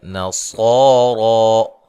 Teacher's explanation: دن نون تنوین کا اظہار ہے، او واو لین ہے، نصارا صوت کو موٹا ادا کرنا ہے اور را کو موٹا ادا کرنا ہے ، اور دونوں پہ مد اصلی ہے، ٹھیک ہے جی۔ قل